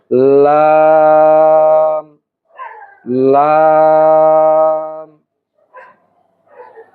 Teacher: এই লাম উচ্চারণ করতে হলে আপনাকে জিহ্বার আগার কিনারা উপরের দাঁতের মাড়ির সঙ্গে লাগাতে হবে। অর্থাৎ জিহ্বার আগাটা সামনের উপরের মাড়ির সঙ্গে লাগাতে হবে, তাহলে লাম উচ্চারিত হবে।